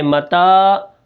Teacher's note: الف ہے، ٹھیک ہے۔ اس کو ہم ایک الف کے برابر کھینچ کر پڑھیں گے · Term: حروف مدہ